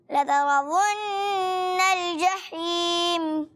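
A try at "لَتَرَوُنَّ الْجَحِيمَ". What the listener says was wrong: تھوڑا شروع میں تھوڑی سی اسپیڈ رہی ورنہ اوورال اچھا پڑا. دوبارہ کوشش کریں اتنی اسپیڈ نہ دیں. لترون الجحیم.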